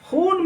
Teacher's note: واو معروف ہے، اس لیے کہ اسے صاف صاف کھینچ کر پڑھا جاتا ہے